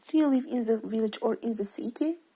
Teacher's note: spoken with the rising intonation in the first part · An alternative question is spoken with a rising intonation in the first part and a falling intonation in the second part.